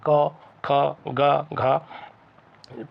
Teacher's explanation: जब आप बोलेंगे तो आपके गले से आवाज़ आएगी, क ख ग घ, यहाँ पर स्पर्श होके ऐसा जीभ टच करके आ रही है कंठ पे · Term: कंठ वर्ग